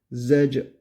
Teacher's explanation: cim harfi cezimli geldi. Burada kalkale yaptık.